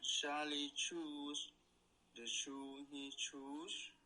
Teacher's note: You're getting a good burst on those ch sounds. It's certainly, coming out as a good flow of air.